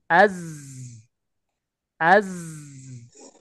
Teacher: dia gak punya sifat Hames karena apa dia tidak ada udara yang mengalir deras keluar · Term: huruf Zai